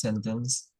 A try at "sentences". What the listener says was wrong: Remember, by the way, sentences has an S on the end.